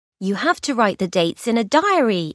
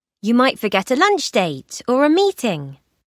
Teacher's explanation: voice rises on diary, lunch date, and meeting because she hasn’t finished what she’s saying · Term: rising intonation